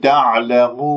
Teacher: ضميت الشفاه إلى الأمام، خليت رأس اللسان وين؟ في المنطقة اللحمية أسفل الثنايا السفلى، وأرفع أقصى اللسان قليلا، والنون أسمعها ظاهرة تعلمون. · وعندما تقف هنا بالمد العارض للسكون في كلمة تعلمون لا تجعل غنة في هذه الواو